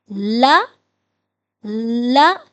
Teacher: ان کا مخرج یہ ہے کہ زبان کی نوک کو ہم نے اوپر والے دانتوں کے پیچھے لگانا ہے، لیکن زبان کو تالو کے ساتھ نہیں ٹچ ہونے دینا، زبان کو تالو کے ساتھ ٹچ نہیں کرنا، اور زبان کی نوک کو اوپر والے دانتوں کی بیک سائڈ پہ لگا دینا ہے۔